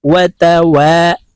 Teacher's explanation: ওয়াও জবর ওয়া, তা জবর তা, ওয়াতা, ওয়াও আলিফ জবর ওয়া, এক আলিফ টান হবে জবরের বাম পাশে, খালি আলিফ মদের হরফ, এক আলিফ টেনে বলতে হবে।